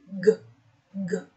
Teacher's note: you can feel that there is vibration and that means this will fall under voiced consonant